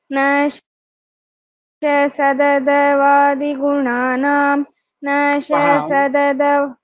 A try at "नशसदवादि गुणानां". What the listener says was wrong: तत्र शस इति भवितव्यं न श सदद इति इति अस्ति किल hyphen but hyphen should be placed after सकार न शस दद वादि गुणानां